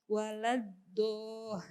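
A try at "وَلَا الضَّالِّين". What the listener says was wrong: Iya, itu walad masih dal ya, dal tafkhim bukan walad do tapi waladdallin.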